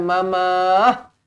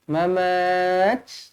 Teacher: kita matikan ta maftuhah ini dengan hamas